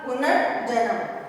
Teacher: अब देखें, जैसे पुनः जमा जन्म, पुनः में जो विसर्गे हैं, पुनः में जो विसर्गे हैं उनको रे हो जाएगा और वो रे कैसा होगा? स्वर रहित होगा, पुनर्जन्म।